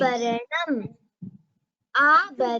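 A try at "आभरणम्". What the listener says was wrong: In this, you should pronounce the bhakara with more breath. Abharanam. Abharanam.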